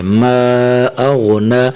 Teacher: میم الف مد زبر ما، حمزہ غین زبر اغ، ما اغ، نون کھڑا زبر نا، ما اغنا، ما اغنا، ٹھیک ہے۔ نون کے اوپر یہ کھڑی زبر ہے، تھوڑا سا کھینچنا ہے